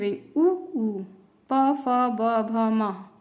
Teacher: इनके उच्चारण में हमारे होठ जो है आपस में एक दूसरे को स्पर्श करते हैं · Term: ओष्ठ